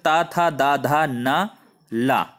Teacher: जिन वर्णों का उच्चारण करने के लिए ऊपर के दांतों पर जीभ का स्पर्श करना होता है उन्हें दंत्य कहते हैं।